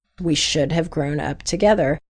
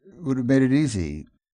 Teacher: it's pronounced without the first [h] and the vowel sound is also reduced, so the word have sounds like a quick [əv]